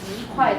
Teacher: When two fourth tones next to each other, E becomes second tone because it's easier to say.